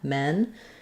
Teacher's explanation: it's a lax vowel, and my tongue is fairly flat. My jaw's not very open. The back of my tongue might be a little bit lifted.